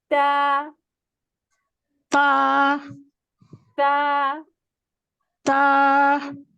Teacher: ता जबान की नोक जो है, ये जो हमारे सामने वाले जो दो दांत है ना, उसके पीछे मसूड़ों पे लगेगी